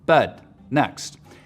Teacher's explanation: trap moving up higher pushes the dress vowel back in the mouth